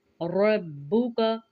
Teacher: रा के ऊपर ज़बर है तो रा को पुर पढ़ेंगे और बा के साथ मिलाएंगे, का को जल्दी पढ़ेंगे।